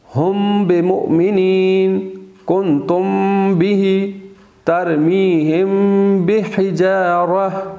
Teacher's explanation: جہاں میم ساکن کے بعد با آ جاتا ہے تو وہاں پہ بھی غنہ ہوتا ہے